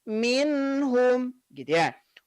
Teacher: jadi bunyi nun mati ketika bertemu dengan huruf H bunyi n-nya itu dia mengalir tidak tertahan tidak minhum tapi Minho medya rasul dalam Inhu minhum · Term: izhar